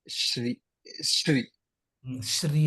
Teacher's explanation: శ్రీ అన్నప్పుడు కూడా మళ్ళీ ఆ తాళవ్య శకారాన్ని శ్రీ అనే అనండి